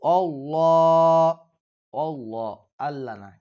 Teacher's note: হুল্লা শব্দটি নরম এবং পাতলা